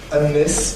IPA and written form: æn ˈnɪs (and this)